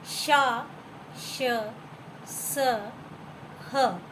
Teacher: तालु से श बोला जाता है, मूर्धा से श, दंत से स और कंठ से ह बोला जाता है। इस तरह से इन्हें ऊष्म व्यंजन कहते हैं।